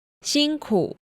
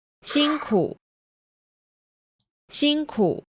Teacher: You should notice it had the half third tone. They didn't pronounce the full falling and rising type contour.